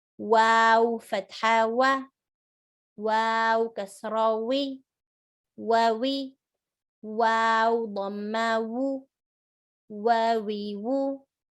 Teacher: wow is circle lips, not like a V, like a W sound.